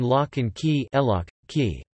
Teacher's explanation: The word and frequently contracts to a simple nasal ’n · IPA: [ˌlɒk ŋ ˈkiː]